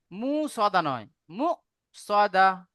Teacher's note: একালি পরিমাণ গুন্না করব তারপরে দেখেন সাদা হামজার উপরে সাকিন আছে সাকিন যুক্ত হামজাকে একটু ঝাটকা দিয়ে পড়তে হয়